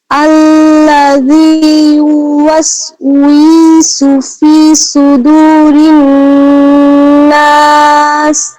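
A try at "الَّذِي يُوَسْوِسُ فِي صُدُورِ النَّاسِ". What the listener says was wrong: আরেকটু স্লো মোশনে পড়লে একদম শোনায় সোহাগা হবে, হ্যাঁ। দেখেন, আল্লাযী ইউওয়াসউইসু, আমরা প্রত্যেকটা হরফ স্পষ্ট করে করে প্রত্যেকটা হরফ পড়বো, হ্যাঁ।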